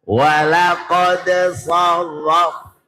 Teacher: qad sar dibaca idhar qalqalah